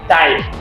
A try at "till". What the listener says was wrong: No, il n'y a pas E. Il n'y a pas E.